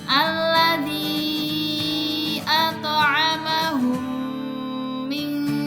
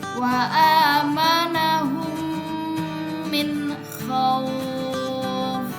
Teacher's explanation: Cara melafalkannya adalah dengan menggabungkan 'mim' ke dalam 'mim' disertai dengan suara 'ghunah' selama sekitar dua ketukan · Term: Idgham Mutamasilain, idgham mutamatsilain